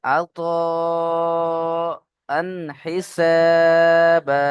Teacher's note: আতাআন হিসাবা, আতা এখানে মাদ রয়েছে, মাদের পরে হামজা একই শব্দে রয়েছে বা আসল রূপে রয়েছে, তাই মাদ্দে মুত্তাসিল এখানেও 2 থেকে 3 আলিফ টান দিয়ে পড়তে হবে। · جزاء من ربك جزاء من ربك عطاء حسابا عطاء حسابا এখানে দেখেন তানবিন রয়েছে, তানবিনের পরে এখানে হরফে আলকি 6টি অক্ষরের মধ্যে হা, তাই তানবিনকে বিনা গুণায় জাহির করে পড়তে হবে।